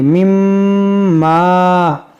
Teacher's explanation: میم مشدد ہے، یہاں پر غنہ کریں گے اور یہ الف مدہ ہے جو کھینچیں گے